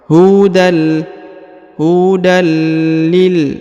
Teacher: huruf tanwin bertemu dengan lam bertasdid, maka tanwinnya menghilang melebur ke sini ke huruf lam, lalu ditahan dan ditekan 2 harokat.